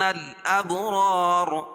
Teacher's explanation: را الف سے پہلے را کے اوپر زبر ہے تو الف مدہ ہوگا اور را کو پر پڑھیں گے کیونکہ دونوں را پر ہو گئی.